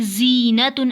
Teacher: ज़ा की आवाज़ बारीक और सीटी वाली होती है